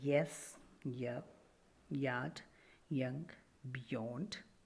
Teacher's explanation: yeah sound is semi-wobble it's palatal semi vowel sound there's a quick tongue movement from position of front close and · there's a quick tongue movement from position of front close and half close